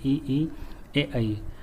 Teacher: अग्रस्वर में ई ये जीभ के अगले भाग से बोले जाते हैं